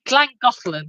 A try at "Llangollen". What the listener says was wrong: It's not Clut. It's Llangollen. You're getting the first bit wrong. Yeah, that's okay. But don't make it into a C. Don't make it clat.